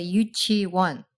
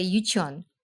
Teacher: in the last syllable you barely pronounce the W at all